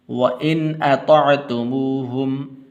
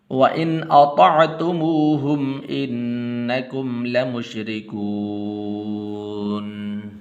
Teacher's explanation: غنہ نہیں کرنا کیونکہ آگے حمزہ حروف حلقی میں سے ہے